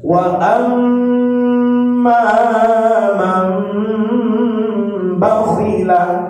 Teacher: nun mati bertemu ba, nama hukumnya dia iqlab. Iqlab artinya merubah suara nun kepada suara mim dengan ditahan 2 harakat.